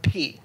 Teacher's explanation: when you hear the letter P there's a burst of air that hits the diaphragm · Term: plosives